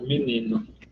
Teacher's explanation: como a vogal tônica é um i, a tendência é, na pronúncia, a gente fazer essa harmonia vocálica